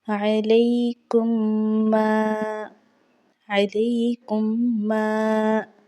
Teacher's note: یعنی کہ ہم نے ظاہر کرنا ہے میم، دونوں میموں کی آواز کو ہم نے چھپانا نہیں ہے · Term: اظہار شفوی